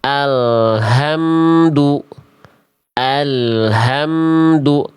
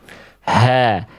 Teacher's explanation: Itu H dari tenggorokan pangkal itu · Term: H besar